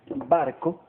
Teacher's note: Barco lleva la sílaba resaltada en bar y como vemos no lleva ningún signo ortográfico para acentuación. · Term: acento prosódico